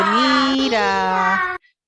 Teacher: produce dos notas planas, dos monotonos, dos notas pedal o de sustentación, ¿sí? No logra hacer el movimiento tonal dentro sobre todo de la primera sílaba, no logra decir mira, sino que se queda mira.